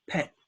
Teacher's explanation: With no T release